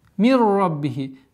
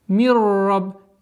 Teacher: Здесь у нас правило идгам без назализации. Ассимиляция без назализации. Мирраб. Ра потверже.